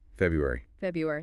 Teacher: so you don't skip over that first r